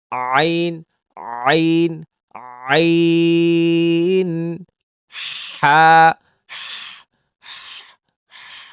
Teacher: হলকের মধ্যখান থেকে উচ্চারিত হয় আইন হা